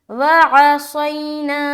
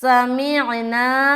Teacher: وعصینا، یہاں پر تھا سمعنا سین باریک اور یہاں پر صاد ہے، وعصینا، صاد کو منہ بھر کر بولنا ہے